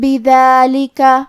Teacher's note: کلمت بذالک میں دال کی ادائیگی زبان کے سر اور اوپر والے دانتوں کے اندرونی کناروں سے ہے